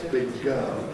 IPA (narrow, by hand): ˌbɪg̚ ˈgɜːl